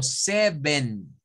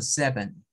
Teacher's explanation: No, no es así. Porque acá la primera sí suena a una E, pero la segunda suena a un schwa